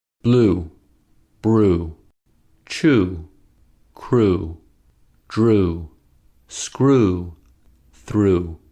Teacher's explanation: To make U, we make the lips tense so that the lips are rounded and protruding. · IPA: /u/